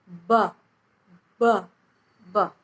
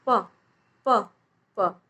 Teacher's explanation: तो प में इतना वाइब्रेशन नहीं होता है। ठीक है, तो जो ब साउंड है वो ओष्ठ्य मतलब जो होठ से बोला जाता है, सघोष मीन्स यहाँ पर आपको वाइब्रेशन फील होगा, और अल्प प्राण वर्ण है, इसमें हवा कम मात्रा में बाहर निकलती है।